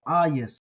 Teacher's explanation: in the environment of an Epsilon following a gamma the gamma becomes a y sound